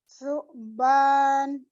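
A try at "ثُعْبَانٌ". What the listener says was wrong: Dari salah huruf sa-nya. Diulang. Pokoknya su-nya harus benar.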